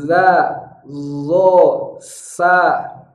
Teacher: cara mengucapkannya adalah ujung lidah kita menempel lembut di ujung gigi seri atas. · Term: bunyi ujung